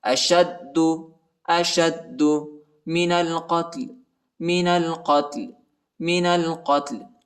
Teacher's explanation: وأخرجوهم من حيث أخرجوكم والفتنة أشد شین کو دال کے ساتھ ملانا ہے، ٹھیک ہے، دال پر شد آیا ہے، دال کو شدت کے ساتھ سختی کے ساتھ پڑھیں گے